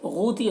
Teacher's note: غین کو پر پڑھنا، حروف مستعلیہ میں سے ہے اور یہاں پر واو مدہ ہے، ایک الف کے برابر کھینچیں گے.